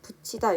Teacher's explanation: 받침에 있는 티읕이 뒤에 있는 이를 만나서 치읓으로 발음이 나고 있습니다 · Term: 국외음화